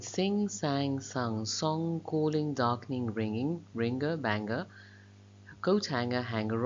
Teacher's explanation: the tongue back comes very close and touches the velum or the soft palate and that closes off the mouth completely